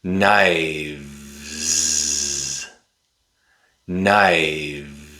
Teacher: When the noun becomes plural, the F changes to V. The V makes a voiced sound. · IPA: /v/